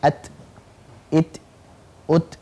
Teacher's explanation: Ketika kita mengucapkan huruf ta, maka ada nafas atau udara yang keluar. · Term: Hames